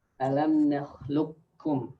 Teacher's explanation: So we idghām the qaf to kaf.